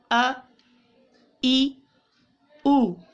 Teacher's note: حمزہ کی آواز دیکھیے گا ابتدا سے آتی ہے ابتدائی حلق سے